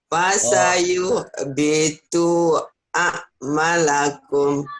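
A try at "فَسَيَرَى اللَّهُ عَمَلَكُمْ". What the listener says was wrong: Maknya panjang, Bu. Panjang, Bu.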